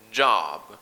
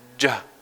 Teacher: we add a little stop before we make the sound.